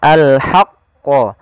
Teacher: qa-nya ditasydidkan, kita tebalkan dulu al-haqqo